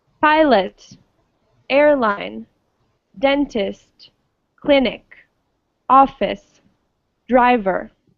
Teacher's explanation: all of those words had the stress on the first syllable